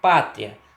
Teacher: Na sílaba tria, perceba aí o encontro da semivogal I com a vogal A, gerando, portanto, um exemplo claro aí de ditongo crescente